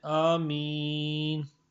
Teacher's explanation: مسئلہ نمبر 83، آمین کو تین طرح پڑھ سکتے ہیں: مد کے الف کو کھینچ کر پڑھیں، مد کے الف کو کھینچ کر پڑھیں اور قصر کے الف کو دراز نہ کریں، اور امالہ کے مد کی صورت میں الف کو یا کی طرف مائل کریں۔